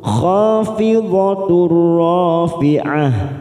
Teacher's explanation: Liwaqa'atiha, ha fathah diikuti alif dua harokat, ka fathah diikuti alif dua harokat, kadibah khafidatur rafi'ah, fathah diikuti alif dua harokat, fidatur tak marbuto duma tanwin bertemu ro, masuk langsung pada huruf ro, namanya idgham bila guna, hanya masuk tanpa ditahan